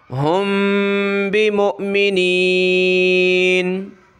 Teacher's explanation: میم ساکن ہے، اس پہ اخفا کیا جاتا ہے، ناک میں آواز چھپائی جاتی ہے